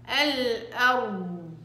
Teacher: الاستطالة ليس لها صوت، الصوت ناتج من وين؟ من رخاوة حرف الضاد. الناس لأنه حرف الضاد بيتعاملوا معه بشدة، وهذا الخطأ، اتعاملي معه بهدوء وبليونة لأنه حرف رخو. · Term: صوت الرخاوة